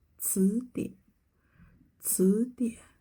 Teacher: the latter half of the third tone won't rise up. We don't say 词典, 词典.